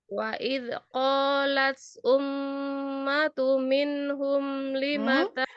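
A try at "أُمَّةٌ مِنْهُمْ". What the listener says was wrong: Ada idgham.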